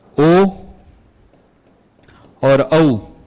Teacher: ओ और औ इसका उच्चारण स्थान कंठ और ओष्ठ है